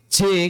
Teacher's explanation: kalau J-nya orang Indonesia, J cuman sekedar pakai ujung lidah saja.